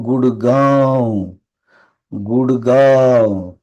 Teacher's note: மூக்கு ஒளியா படிக்கணும் ம் அப்படின்ற ஒளியை கொடுக்கணும்